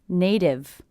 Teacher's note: it's a T coming between 2 vowel sounds, will be a flap T, sounds like a D.